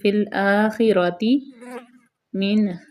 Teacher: خا کو پر پڑھیں گے اور خا پہ خڑخڑاہٹ کی آواز پیدا کریں گے، را زبر ہے، را کے اوپر زبر ہے تو را پر پڑی جائے گی، فی الآخرۃ من، فی الآخرۃ من خلاق، ٹھیک ہے۔